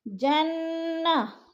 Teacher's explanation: اور بما پہ الف مد ہے، صبرو وہ مد ہے، دونوں کو کھینچنا ہے۔ جنہ، نون مشدد ہے، سختی سے غنہ کریں گے